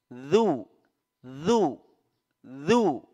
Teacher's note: huruf zal, ya, di ujung lidah bertemu dengan 2 gigi seri atas, ujung 2 gigi seri atas